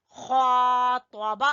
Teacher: खा को खींचेंगे तो और बा को छोटा पढ़ेंगे।